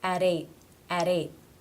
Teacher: it would be d, d, the flap T sound or the D sound